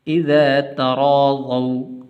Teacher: را کو پر کر کے پڑھیں گے، اور واو حروف لین میں سے ہے تو اس لیے اس کو لمبا نہیں کرنا.